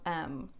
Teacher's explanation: vibration here right so it's nasal to articulate the sound um we actually use both lips so it's bilabial